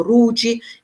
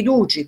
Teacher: ci sono alcuni centri che usano la R al posto della D, per cui dicono Ruci invece di Duci, per esempio.